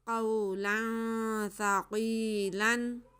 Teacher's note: वाओ साकिन से पहले ज़बर है, ये वाओ लीन है, इसको नहीं खींचेंगे